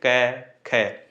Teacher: इनमें केवल श्वास सांसों का प्रयोग हो रहा है, इसमें गूंज नहीं हो रही, तो इसलिए ये अघोष ध्वनियां हैं।